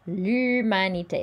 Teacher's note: we don't pronounce H's. The L apostrophe sounds like it's the first letter of this word.